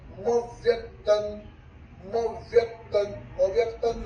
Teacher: संयुक्त अक्षर यानी मराठी में जोड़ाक्षर है। ये चाप्यक्षर मव्यक्तन, मव्यक्तन, म पर आघात देना है, म पर हल्का सा जोर देना है